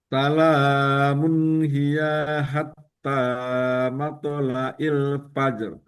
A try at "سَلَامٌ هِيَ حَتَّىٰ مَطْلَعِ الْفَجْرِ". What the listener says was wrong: Bagus. Tinggal panjang pendeknya lagi.